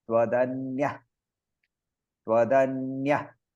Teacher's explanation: the visarga is in the middle, so we don't pronounce the visarga, we will only aspirate the word.